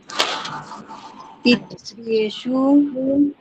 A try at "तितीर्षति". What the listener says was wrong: तितीर्षति, तितीर र पहले आ जाएगा, तितीर्षति।